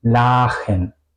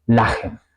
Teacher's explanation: La sílaba finaliza en la A, pero se pronuncia corta porque tenemos una CH después, ¿ok? Eso también es una tendencia, que hay una CH después que las vocales se pronuncian igual, cortas, en muchos casos.